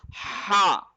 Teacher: ہا گلے کے درمیان میں زور لگے گا. ہا.